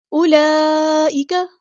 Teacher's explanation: یہ واؤ کی ساؤنڈ نہیں آئے گی، یہ واؤ جو ہے واؤ مدہ نہیں ہے. اولئک، یہاں پر مد جو ہے وہ مد متصل یعنی کنیکٹڈ مد ہے، اسے 4 یا 5 کاؤنٹ ہمیں لمبا کرنا ہے.